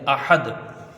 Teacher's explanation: मद यहाँ कोई नहीं बनेगा क्योंकि हर्फ मद यहाँ पर नहीं है, दाल में कलकला होगा आहद। हमज़ा हा को जल्दी पढ़ के और दाल में कलकला करेंगे